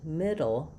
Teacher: in middle, I'm just lifting my tongue and dropping it back or moving it right to the L position and not bursting up any, not bringing up, building up any pressure or not bursting out the air. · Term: flap